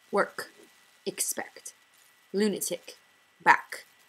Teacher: Scottish speakers have strongly released plosive consonants with the exception of certain post-vocalic t sounds which become glottal attacks.